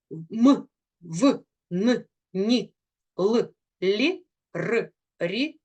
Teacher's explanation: що в українській мові їх 32 приголосних звуки Вони діляться на сонорні голос переважає над шумом